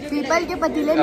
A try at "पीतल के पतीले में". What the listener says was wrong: पीपल का पतीला नहीं होता है पीतल का पतीला होता है।